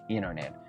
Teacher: Esto también puede suceder dentro de una palabra, como vimos anteriormente con la palabra internet. El sonido de la N más T hacen este sonido súper rápido de N